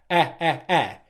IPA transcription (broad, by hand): e